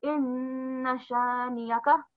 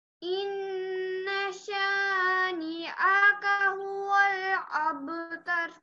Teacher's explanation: Inna shaniyaka. So no aga, don't make an ayin sound. Just make a smooth hamza sound